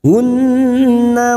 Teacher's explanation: Hu duma diikuti waw sukun 2 harokat. Hunnah nun yang bertasdid gunnah mustadadah kita dengungkan selama 3 harokat